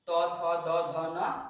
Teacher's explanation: त थ द ध न ये दंत से उच्चारण होता है, न कि दंतोष्ठ से